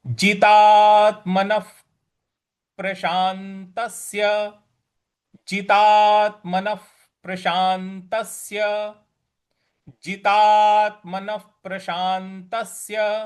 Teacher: प के बाद का जो अक्षर होता है वो फ होता है तो यहां पर विसर्ग को हम फ के उच्चारण में लाएंगे